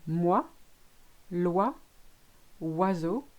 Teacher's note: The OI, my favorite, make the sound wa, which in English is WA.